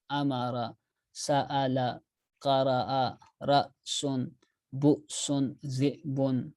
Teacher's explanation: پڑھتے وقت زبان کو جھٹکا دے کر پڑھتے ہیں، وہ حمزہ ہے